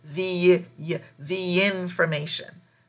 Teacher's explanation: So any word that starts with a vowel, you say the, you add a little Y sound, and you just continue the sound all the way through